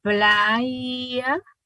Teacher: si decimos playa, como que si fuera una I, utilizamos la aproximante palatal sonora